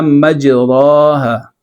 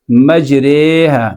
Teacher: اب آپ نے امالہ کر دیا یہاں پہ، تو امالہ کے لیے آپ نے دو کام کیے ہیں۔ ایک جو را کا زبر تھا اس کو آپ نے مائل کیا زیر کی طرف، ایک اس را کے بعد جو الف تھا اس الف کو آپ نے مائل کیا یا کی طرف